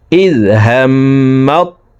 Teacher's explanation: জবরওয়ালা মিমটি সরাসরি তাসদিদওয়ালা তকে ধরবে, মাঝখানে জজমওয়ালা তা বাদ পড়ে যাবে। তো এখন এভাবে পড়ব, ইজ হাম্মাত, ত আলিফ জবর ত, 4 আলিফ টান, মদার হারফের উপরে মোটা চিহ্ন বামে হামজা, মধ্যে মুত্তাসিল 4 আলিফ টানিয়া পড়িতে হয়।